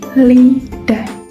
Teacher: Jadi aliran udara itu dihambat di tengah agar udara itu bisa lewat samping-samping lidah. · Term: sampingan